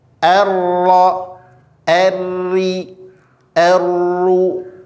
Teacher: bergetarnya posisi ujung lidah ketika membunyikan huruf huruf ro kemudian juga berhubungan dengan berapa kali Sisi benarnya getaran huruf ro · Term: takrir